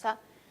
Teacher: Este sonido es un sonido que se produce con el ápice de la lengua tocando la zona alveolar, pero el aire, a pesar de que hay un obstáculo, sigue saliendo. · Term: fricativo